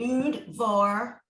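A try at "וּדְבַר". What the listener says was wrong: Okay, it's not Ud. The U is separate. Udavar. Udavar. It's a separate syllable. Udavar.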